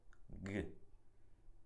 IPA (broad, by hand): g